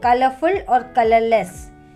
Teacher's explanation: We don't give any stress to FUL full or LESS less